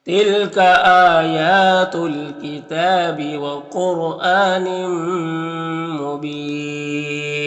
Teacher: قاف حروف مستعلیہ میں سے پر پڑھیں گے. را ساکن سے پہلے قاف کے اوپر پیش ہے تو را کو بھی پر پڑھیں گے. حمزہ میں کھڑا زبر ہے یہ الف مدہ کی طرح ہوتا ہے تو اسے ایک الف کو برابر کھینچیں گے. · را ساکن سے پہلے قاف کے اوپر پیش ہے تو را کو بھی پر پڑھیں گے. حمزہ میں کھڑا زبر ہے یہ الف مدہ کی طرح ہوتا ہے تو اسے ایک الف کو برابر کھینچیں گے. یہاں پر تنوین کے بعد میم حروف یومن میں سے تو ادغام ناقص ہوگا اور مبین میں وقف کریں گے تو مد عارض وقفی ہوگا.